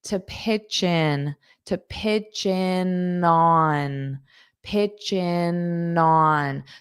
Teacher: it sounds like chin because I'm taking the ch and I'm connecting it to pitch in